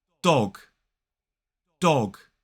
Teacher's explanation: in a modern British RP accent, we round our lips and make that O sound. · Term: rounded O sound